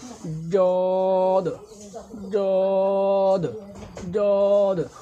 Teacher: জদ অক্ষরকে জিহ্বার গোড়ার কিনারা উপরের দন্ত মারির সাথে লাগিয়ে মোটা ও কষ্ট করে পড়তে হয়